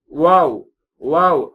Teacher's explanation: வாவ் அப்படிங்கும் போது உதடு வட்டமாக ஆகவேண்டும் ஆனா உதடு ஒட்டாது